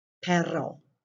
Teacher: the second you trill or roll it if you can